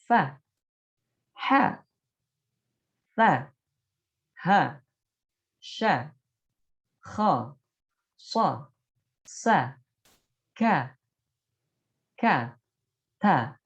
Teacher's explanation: huruf-huruf hams ini ketika dikeluarkan harus disertai dengan nafas keluar. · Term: al-hams